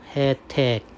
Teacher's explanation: 예로 발음하는 게 원칙인데 에로 발음할 수도 있겠죠.